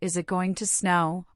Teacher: the intonation in questions like is it going to snow, where the voice often rises at the end